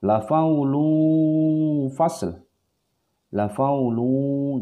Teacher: La faulu. Jadi suara ang tidak, suara n tidak. Jadi seperti agak ngambang begitu, ya. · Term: ikhfa ausat